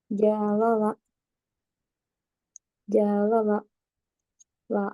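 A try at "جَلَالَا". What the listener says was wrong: Jangan gitu. Kakak nadanya jangan jalala. Kalau kita jalala, janya panjang. Jalala, gitu aja. Jalala, stabil dia. Jalala, jalala.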